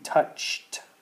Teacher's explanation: Okay, hear the t sound with the ch. When we have a ch and we say it in the past tense, it sounds like a T